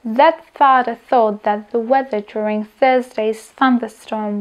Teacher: patria podľa miesta artikulácie medzi zubné alebo tiež dentálne, pretože ich vyslovujeme medzi zubami, respektíve jazyk sa nachádza medzi zubami. Pri je dôležité, aby ste si zubami do jazyka nekúsali.